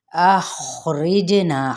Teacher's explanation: اخرجنا، خا جو ان سے ہے وہ حروف مستعلیہ میں سے ہے اور آ باریک کرتے ہوئے جیم پہ قلقلہ ہوگا اور نا پہ الف مدہ ہے